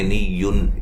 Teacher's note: نون تنوین کا اظہار ہے، غنہ نہیں کریں گے